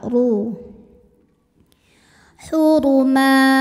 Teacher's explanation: karena berharakat di atas maka bacanya tebal